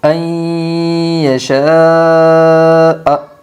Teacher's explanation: وجوہ یومئذ ان یشاء، حمزہ یا زبر این، یا زبر یا، شین الف زبر شا، یشاء حمزہ زبر ا، ان یشاء ادغام مع الغنہ ہوگا۔ نون ساکن کے بعد یومن کے 4 حرفوں میں سے یا آئی ہے، اس لیے نون ساکن کو غنہ کے ساتھ ملا کر پڑھے گی۔